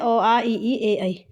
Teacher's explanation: अवृत्त मुखी यानी कि इसमें हमारा जो हमारे जो होठ हैं वो नहीं होंगे गोल